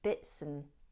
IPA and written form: bɪtsən (bits and)